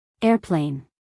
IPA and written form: ˈerpleɪn (airplane)